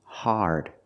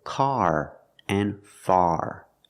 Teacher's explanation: in English we don't say horde the word is pronounced hard it's an open Sound connected to the r like when you say car and far